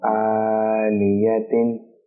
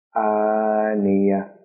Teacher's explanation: جب گول تا پر وقف کیا جاتا ہے تو اسے ہا پڑھتے ہیں